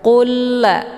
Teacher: Qulla hukum bacaan idgham mislain tiada berdengung. · lam sukun dimasukkan ke dalam lam yang bertasydid dengan cara ditekan dan masuknya adalah kamil secara sempurna.